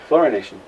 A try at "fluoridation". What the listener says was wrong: But you're losing a D in that. You're saying fluorination. You're making up words.